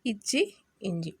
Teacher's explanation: நாவின் இடை நடு அன்னத்தின் இடையை தொடுவதால் உருவாகக்கூடிய எழுத்து